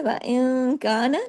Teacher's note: اخفا کے اندر یہ ہوتا ہے تھوڑی آواز ناک میں چلی جاتی ہے، تھوڑی باہر رہتی ہے ، غنہ سیکنڈ لیول کا،